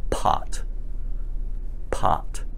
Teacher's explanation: in front of your mouth and say the word pot popped you feel the little puff of air when you say the P sound